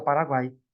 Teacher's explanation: O tritongo oral, ó, Paraguai, né? O som sai pela boca, Paraguai. Saguão, aí já é um tritongo nasal, né?